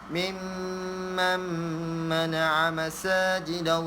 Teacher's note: Di depan dia nun mati bertemu dengan mim. Jadi dia menghilangkan nun tu, memasukkan mim tu, dengung.